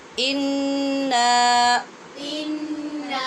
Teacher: یہاں پہ غنہ تو کرنا ہی ہے، لیکن الف ہونے کی وجہ سے نون کو لمبا بھی کرنا ہے، انا نہیں کہنا، ٹھیک ہے؟